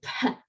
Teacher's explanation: Phi was a P sound with a little puff of air